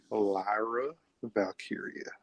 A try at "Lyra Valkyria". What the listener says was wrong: Now say it smoothly now. Say it, like you're having a